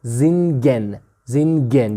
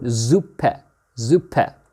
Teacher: Before vowels, S will sound z, yeah?